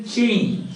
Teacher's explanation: It is oral, voiceless, palato, alveolar, affricate.